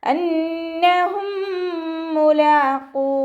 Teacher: സുക്കൂനായ മീമിനെ അടുത്ത മീമിലേക്ക് ലയിപ്പിച്ച് ഒന്നയോടുകൂടി ഓതിക്കൊടുക്കുക. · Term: ഇദാം ഷഫവിയാണ്